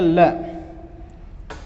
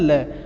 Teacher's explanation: वे व्यंजन जिनके उच्चारण में जिह्वा मसूड़ों को छूती है और हवा का प्रमुख वेग जिह्वा के आसपास से निकल जाता है, पार्श्व व्यंजन कहलाते हैं।